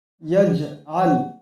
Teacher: জিম লাম পেশ জুল, ইয়া জাহাল, এখানে দেখেন জিম সাকিন, এটা কলকলা হরফ, গতিকে এখানে আওয়াজটা টক্কর খাবে। এই লাম কলকলা হরফ না, এখানে আওয়াজটা টক্কর খাবে না